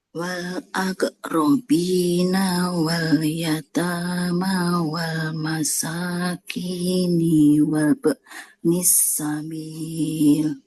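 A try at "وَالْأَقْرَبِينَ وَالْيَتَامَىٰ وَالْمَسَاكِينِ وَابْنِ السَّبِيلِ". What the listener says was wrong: Hati-hati untuk panjang pendeknya. Wal aqrabina. Nah, fathah nggak ketemu alif di depannya. Bahkan nggak boleh panjang ya. Wal aqrabina wal yatama wal masakini wabnis sabil. Tinggal sinnya sedikit, jangan panjang. Wabnis sabil.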